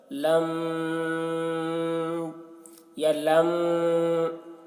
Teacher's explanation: لم یہاں پر میم میں غنہ کریں گے، غنہ اخفا کے ساتھ پڑھیں گے کیونکہ میم ساکن کے بعد با ہے، ٹھیک ہے، تو أَلَمْ